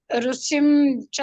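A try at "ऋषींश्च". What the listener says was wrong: ಇಲ್ಲ ಋಷಿ ಋಷಿ ಬರುತ್ತೆ ಹೇಳಬೇಕಲ್ಲ ಶ ಇದೆ ಋಷಿಶ್ಚ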